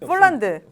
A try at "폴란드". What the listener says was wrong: 폴란드가 아니라 이거 왜 F 발음으로 해? 폴란드.